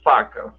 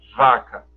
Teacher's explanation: Um é surdo, o outro é sonoro. Todos os dois labiodentais. Então você tem o ponto de articulação, lábio e dente, e você tem o modo de articulação, o fricativo.